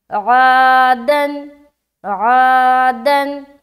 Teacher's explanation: अलिफ मद्दा को एक अलिफ के बराबर खींचकर पढ़ेंगे, जैसे आ दन। दाल के ऊपर दो ज़बर की तनवीन है, तनवीन और नून साकिन की आवाज़ यकसा होती है